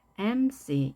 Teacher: retell, recess, and an MC. 이번에는 앞에 강세가 있어서 MC.